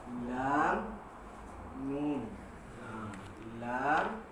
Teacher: Keinginan dari keduanya dapat kita menyambung pada malam ini Jadi kita sambung masih lagi pada muka surat 14, iaitu makhraj lisan, makhraj lidah. Huruf nun, tempat keluarnya adalah apabila hujung lidah bertemu dengan lelangit belakang sedikit daripada makhraj huruf lam